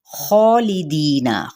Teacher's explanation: خا پہ مد سلیب الالف کا قائم مقام ہے جس کو ایک الف یا دو حرکات کے برابر کھینچا جائے گا، اور ساتھ ہی خا حروف مستعلیہ میں سے ایک حرف ہے جس کو ہر کنڈیشن میں پر ہی پڑھا جاتا ہے، یعنی موٹا کر کے۔